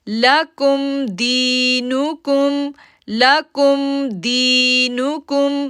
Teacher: دی کو کھینچا کیونکہ یا ساکن سے پہلے زیر ہے، 2 سیکنڈ کے لیے کھینچنا ہے